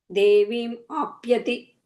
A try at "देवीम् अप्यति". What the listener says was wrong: I think you're adding a little bit of ah sound there, just a ah. Devim apyati. No, so first one. Devim apyati vegavan.